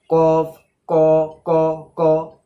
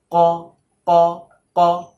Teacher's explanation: শক্ত তালুতে টাচ হবে না, হবে নরম তালুতে। ক ক মানে মুখের ভেতরের অংশ থেকে ক ক ক।